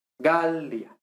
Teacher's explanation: a esta i inmediatamente le sigue una a, por tanto, automáticamente breve. Entonces no es galía, no, sino galía.